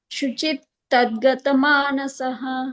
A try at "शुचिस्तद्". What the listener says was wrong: Is sound is there. Shuchistad.